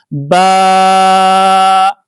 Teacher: ba comes from mid of the lips